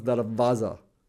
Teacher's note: The Afghanis, Pakistanis, Indians, and Central Asians use the same word. It's written with the waw, but because the waw in the Persian language, and people who speak Urdu know this, it becomes va, right?